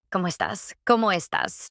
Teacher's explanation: Notice the stress is on the last syllable.